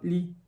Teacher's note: vai falar Li e vai esquecer do t no final